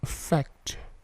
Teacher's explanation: Perhatikan bunyi T-nya itu memantul.